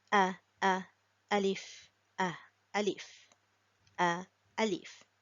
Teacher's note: alif is pronounced from the lower part of the throat